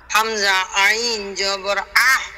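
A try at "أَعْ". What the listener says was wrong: না ছেড়ে দিবেন না, লাস্টে ছেড়ে দিবেন না, বাতাস বের করবেন না, চাপ দিয়ে ধরে রাখবেন।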